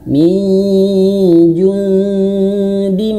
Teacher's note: Mim bertasydid, nun bertasydid, dua hurufnya harus ditahan. Ya meskipun pada sebenarnya ini bukan hukum mim bertasydid ya.